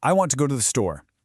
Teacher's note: The words want, go, and store get the spotlight while I, too, and 'the' are just rushed through. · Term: stresstimed language, stress-timed language